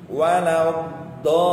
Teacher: donya panjangnya sampai sempurna 6, baru neken ke huruf lam ya · Harus ada nabernya, ada suara tekanan di huruf lamnya